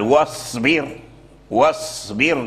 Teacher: لان الباء مرققه مكسوره والراء مرققه لانها ساكنه فاللسان يميل الى الترقيق الصاد فيرجع الصاد سينا